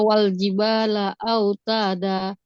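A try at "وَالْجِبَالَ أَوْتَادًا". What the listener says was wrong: Betul.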